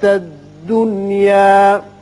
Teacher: ظاہری طور پر تو آپ سوچیں گے کہ یہاں ادغام بغنہ ہونا چاہیے، لیکن ادغام بغنہ جو ہے اس کی شرطی تھی کہ دو کلموں میں ہو، نون ساکن اور جو اس کے حروف ہیں غنے کے ادغام کے ینمو، اگر دو کلمے میں ہوں تو وہاں ادغام بغنہ ہوتا ہے۔ یہ ایک ہی کلمہ ہے، لہذا یہاں ادغام نہیں ہوگا، بلکہ اظہار مطلق اسے کہتے ہیں، نون کا اظہار ہوگا۔